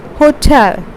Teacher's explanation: Stress is on the second syllable. We pronounce this as hotel and not hotel.